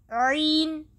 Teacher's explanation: عین درمیانے حلق سے ادا ہوگا بغیر سانس لیے ہوئے